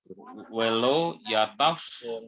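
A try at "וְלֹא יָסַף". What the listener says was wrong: Yes, ya, ini S. Yasab. Iya, Samek.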